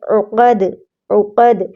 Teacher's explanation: عین قاف کو موٹا پڑھنا ہے اور دال پہ پھر قلقلہ کرنا ہے کیونکہ دال ساکن ہے